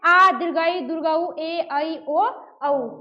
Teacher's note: जिसके उच्चारण में ह्रस्व की अपेक्षा दो गुना समय लगे उसे क्या कहेंगे दीर्घ स्वर कहेंगे